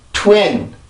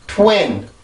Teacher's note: 반드시 치조로 가되 내가 이 강세음절의 시작일 때보다는 그 힘이 약해진다라는 거죠